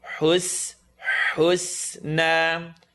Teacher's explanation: So it's going to go oo, and then the seen, tip of the tongue, bottom teeth.